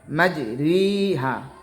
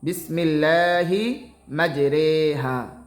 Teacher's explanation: এখানে মূলত উচ্চারণ হবে মাজরিহা, তবে এখানে এই ইয়ায়ে মাজহুল উচ্চারণ হবে বিসমিল্লাহি মাজরেহা।